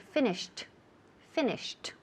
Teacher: For example, finish, okay, el verbo to finish, cuando pasamos al pasado, ese ed, el último sonido, it sounds like a T, right?